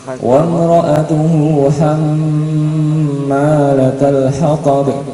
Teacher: Kemudian yang bawahnya ini mim tasydid, wa mar'atuhu hammalatul hatab, hamma mim tasydid. Maka nanti bacanya juga agak lama juga.